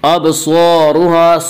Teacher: ابصارها صاد کو پر پڑھیں گے، صاد حروف مستعلیہ میں سے ہے، حروف مستعلیہ 7 ہیں جن کا مجموعہ خصہ ضغط قزا جو ہمیشہ ہر حال میں پر پڑھے جاتے ہیں۔